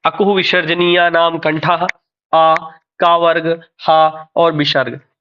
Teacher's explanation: आ क वर्ग ह और विसर्ग इनका उच्चारण स्थान है कंठ